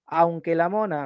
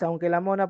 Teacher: La entonación ha sido cortada, por eso es horizontal. Se queda en un solo momento.